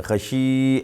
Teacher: خشی ایک الف کے برابر کھینچیں گے